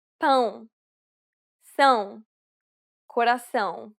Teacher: This is arguably the most difficult sound for Portuguese learners to pronounce correctly. It is similar to the ow sound in English, but with nasality.